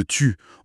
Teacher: Pour le son I, le U de tu, on suggère de partir du son i, le i de si, et d'arrondir les lèvres en les projetant bien en avant